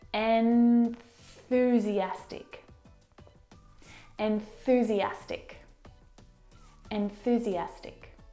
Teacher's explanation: to move to the TH sound, you need to, of course, bring your tongue down and out through your teeth. And the tongue must come out through the middle of your teeth.